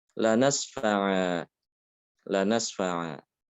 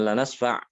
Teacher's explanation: Tanwinnya diganti dengan huruf mat alif. Dibaca dua harokat ya. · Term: mat iwad